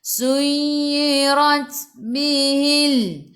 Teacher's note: Ra baca dengan tebal, ra baris atas tafkhim.